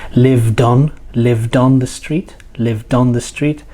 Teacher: the final consonant sound of the previous word joins to the vowel sound on the next word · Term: connected speech